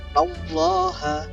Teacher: nun berharokat fathah bertemu dengan kalimat Allah, ya kan, maka dibaca tebal. Nah, ini disebut sebagai tafkhim.